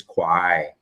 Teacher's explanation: In Samui, like, it starts lower down. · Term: Got Samui dialect